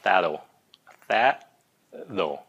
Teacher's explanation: tại vì cái âm T người Mỹ hay phát âm là âm D